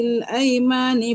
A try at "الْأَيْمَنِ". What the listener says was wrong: Aiman ni. Ini pendek.